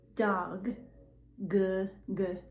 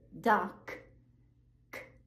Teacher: Dog, g g, that's voiced. Doc, k, that is not voiced. You're not using your voice.